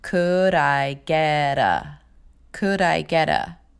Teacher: Those are two flaps in a row.